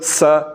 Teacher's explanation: بریک آواز ہے اور سیٹی کی آواز ہے